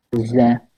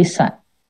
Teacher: Kalau dia di hams kan, nanti dia jadi sa.